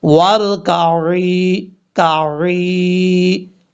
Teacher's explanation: عین کو آپ نے عین کے مخرج سے ادا کرنا ہے، حمزہ کی آواز نہیں آنی چاہیے، اس چیز کا آپ نے خاص خیال رکھنا ہے۔